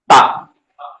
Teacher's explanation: ता का मखरज यह है कि जुबान की नोक को सामने ऊपर के जो दोनों दांत है उसके पीछे लगाना है · تا کا مخرج یہ ہے کہ زبان کی نوک کو سامنے اوپر کے جو دونوں دانت ہیں اس کے پیچھے لگانا ہے, پیٹھ پہ, تا.